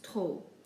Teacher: For example, the first one, we pronounce it trop, not trop. We basically just ignore the P when we pronounce it, just giving us trop.